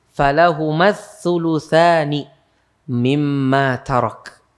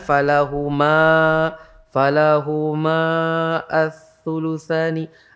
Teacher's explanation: Alifnya dibuang ketika dibaca, bukan dibuang dari tulisan, bukan. Tetap tulisannya, tapi ketika dibaca dibuang. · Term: Buang alifnya